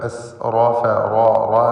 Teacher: മൻ അസ്റഫ ഈ പദത്തിൽ റാഇനെ പൂർണ്ണമായ തഫ്ഖീം ചെയ്ത് ഉച്ചരിക്കുക. എസ് റോഫ റോ റോ എന്ന് തടിപ്പിച്ചുകൊണ്ടുള്ള ശബ്ദം കൊടുക്കുക.